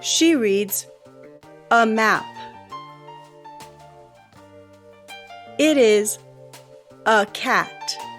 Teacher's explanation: The sound is neutral. It's not long and it's not short. The phoneme is called the schwa.